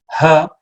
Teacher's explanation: the closest we have is the ha which comes from much deeper it's a glottal sound